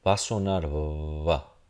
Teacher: es ese sonido fricativo donde los labios se acercan, se aproximan ambos así, pero no se tocan completamente. Y es lo que termina pasando y permite que ese aire siga fluyendo.